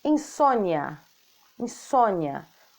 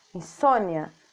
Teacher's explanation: O i fica mais forte, insônia. E o A, no caso, fica mais fraquinho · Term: semivogal